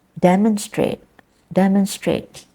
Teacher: where is the stress demonstrate is in the first syllable